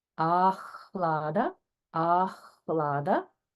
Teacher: So here we have another example of holding on hakara after a dirgha.